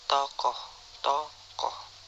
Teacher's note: Vokal O. Vokal belakang, sedang bawah, bundar, semi terbuka.